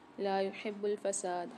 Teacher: ہا کی آواز کو واضح کریں گے، با کے ساتھ ملا کے پڑھیں گے ہا کو